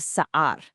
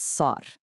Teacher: sod is a deep, heavy S that comes from farther back in your throat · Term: emphatic consonants